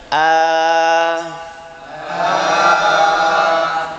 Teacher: itu yang panjang itu ya aljauf namanya. Karena seolah-olah plong keluar kosong itu aljauf namanya.